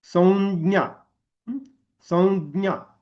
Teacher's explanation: त्या संवरच्या अनुस्वाराचा उच्चार कसा होतो च वर्गीय होतो